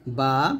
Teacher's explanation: দুই ঠোঁটের ভিজা অংশে মিলিয়ে